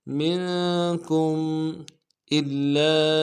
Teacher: کاف کو میم ساکن کے ساتھ ملانا ہے، میم ساکن میں اظہار کریں گے ، منکم الا، الا، حمزہ کو لام کے ساتھ ملانا ہے،